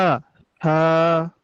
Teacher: জিহ্বার আগাটা সামনের উপরে দুই দাঁতের আগার সঙ্গে লেগেছে এবং ঠোট কিন্তু ফাঁকা থাকবে